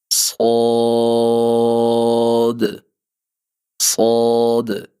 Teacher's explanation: اس کی ادائیگی زبان کی نوک اور آپ کے نیچے والے دو دانتوں کے جو کنارے ہیں ان کے ساتھ مضبوطی سے لگے گی زبان، اور اس کو موٹا کرنے کے لیے ہم زبان کے پچھلے حصے کو تالو کی طرف اٹھا دیں گے، تو اس سے موٹی اور سیٹی جیسی آواز وہ پیدا ہوگی